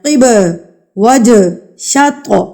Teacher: یہاں پر یہ سارے حروف قلقلہ ہیں، ان کو آپ نے ہلا کر پڑھنا ہے، یعنی کہ ترتراہٹ سے پچھلے لفظ کو آپ نے اس کے اوپر مار کے پڑھنا ہے۔